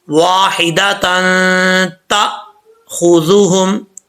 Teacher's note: یہ حمزہ، یہ دونوں جو ہے وہ سختی سے پڑھے جاتے ہیں، اور اگر یہ ساکن ہوں تو جھٹکے کے ساتھ پڑھے جاتے ہیں، تو یہاں پر حمزہ جو ہے ساکن ہے، جھٹکے سے پڑھیں گے اس کو